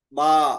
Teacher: 16वां मखरज शफवी। दोनों होठों से 3 हरूफ बा, मीम, वाव गैर मद्दा निकलते हैं।